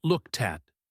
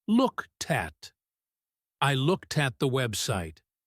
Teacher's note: The t from looked jumps over to the at the vowel in at becomes a schwah.